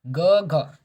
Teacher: जब आप ग और घा को बोलते हैं तो आपके जो कंठ से आवाज निकलती है तो इसे कंठ ध्वनि बोलते हैं